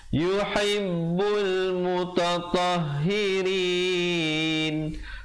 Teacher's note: alif lam qamar ya, lamnya dibunyikan.